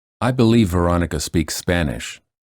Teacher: Notice how two same or similar consonants blend into one to link words more smoothly. The final stops are not released.